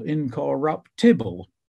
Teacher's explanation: Handel consistently sets the word incorruptible as if it's stressed on the fourth syllable, incorruptible, which to our ears sounds completely daft.